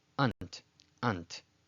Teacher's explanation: it's not Ant because Hebrew doesn't have that A sound it's Ah-nt.